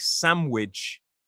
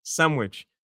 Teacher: American is sandwich with a ch sound at the end. But you hear a lot of varieties like sandwich, like with a m sound instead of an n.